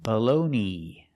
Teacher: The second vowel is a long o, like no and go.